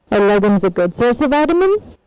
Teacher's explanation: Here again, when the accent is on good, again we have the rise from the main accent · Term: yes no question tune, yes-no question tune